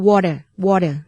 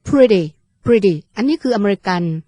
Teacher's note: เป็นดีที่เกิดขึ้นอย่างนุ่มนวลและรวดเร็วนะคะ